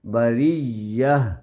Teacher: اس تا کو حالت وقف میں رکنے کی صورت میں سانس روکنے کی صورت میں وہ تا ہا بن جائے گی